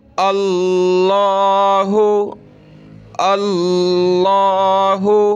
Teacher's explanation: دیکھیں لفظ اللہ سے پہلے حمزہ پر زبر ہے تو لفظ اللہ کو موٹا کریں گے